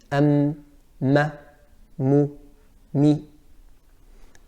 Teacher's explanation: the makhraj of mim is by closing the lips, and it is accompanied by a ghunnah · it's fairly easy to see that the makhraj of mim is from the lips. So the makhraj of mim is by closing the lips, but with closing the lips, we have a ghunnah.